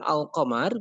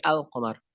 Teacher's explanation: ketika kita menyebutkan al-qamar maka kita membacanya alif lamnya itu diidharkan al-qamar, tidak ak-qamar tapi al-qamar.